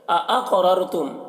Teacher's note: क़ाफ को पुर पढ़ेंगे और क़ाफ में कलकला करेंगे